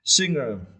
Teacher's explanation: You need to stress the first syllable